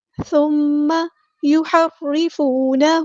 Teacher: فا ہم نے باریک نرمی سے ادا کرنا ہے، اور میم پہ غنہ زمانی ہو رہا ہے، الف کے برابر رکیں گے ، یحرفون، ہا کو وسطی لیکن مڈل تھروٹ سے ادا کرنا